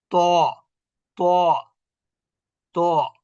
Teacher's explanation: তয়ের মাখরাজের সময় জিহ্বার মধ্যভাগ কি হবে? উঁচু হবে। ত ত ত, এটা হলো তয় বয়, মোটা অক্ষর।